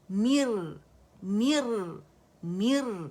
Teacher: می ایک تو میم باریک ہے، اور دوسرا ہمارے پاس را سکون سے پہلے اوریجنل کسرہ جو آ رہی ہے، ٹھیک ہے. تو ہم نے را کو باریک پڑھنا ہے